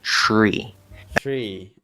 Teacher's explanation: So it's spelled T-R-E-E, Tree. but it's actually pronounced C-H-R-E-E.